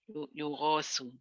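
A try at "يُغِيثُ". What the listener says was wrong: It should have a kasra somewhere.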